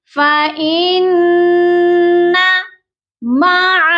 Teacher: نون مشدد ہے، یہاں پر ہم نے غنہ کرنا ہے. فإن مع اچھا یہاں پر فإن مع، اکثر لوگوں سے نون لمبا ہو جاتا ہے.